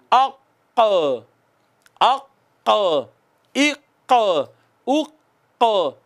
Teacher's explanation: تو قاف وہ زبان کے آخری سرے سے پیچھے جڑ سے ادا ہوتا ہے